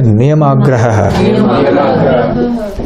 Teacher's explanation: Don't split it, don't say niyam and then agra, say niyamagraha. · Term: one continuous word